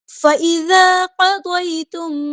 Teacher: حمزہ کی آواز واضح ادا کرنی ہے، الف مدہ ہے، مد اصلی اور یہ 2 کاؤنٹ ہم یہاں پہ لمبا کریں گے۔ فَإِذَا قَضَيْتُم، یا علینا یہ نرمی سے موریں گے، قاف ہمارا ہیبریٹر ہے پورا ادا کریں گے، ضاد بھی ہمارا ہیبریٹر ہے پورا ادا کریں گے۔